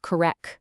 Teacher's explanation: drop the hard T at the end. It's pronounced correc.